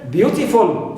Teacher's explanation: full is always neutral, clear, and beau is stressed syllable as usual